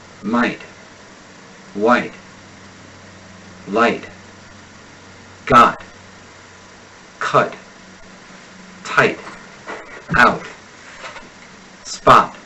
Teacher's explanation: in American English most final te's will go unarticulated · Americans generally abstain from pronouncing the final T this is because the air will usually be stopped in the vocal folds before the tip of the tongue has a chance to strike behind the upper teeth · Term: final T's